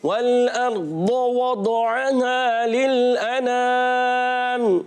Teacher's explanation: دونوں ہونٹوں کی گولائی سے واو ادا ہوتا ہے